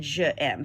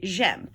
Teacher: The reason it's J apostrophe is because you have two vowels in a row if you said je aime. So they just shorten that and say j'aime.